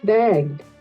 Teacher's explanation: Entonces, begged, begged suena más suave. begged, Begged es una D. Se parece mucho al golpe de T, pero es un poquito más suave.